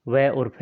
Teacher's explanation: दंतोष्ट में जो निचले होठ और ऊपर के दांतों से व और फ निकलता है